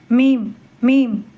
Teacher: இதனை உச்சரிக்கும் போது இரு உதடுகளையும் சேர்க்க வேண்டும். பற்களை சேர்க்காமல் இருக்கணும்.